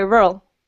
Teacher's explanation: we do pronounce the second R, but just barely